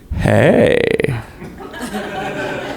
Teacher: that little bit of vocal fry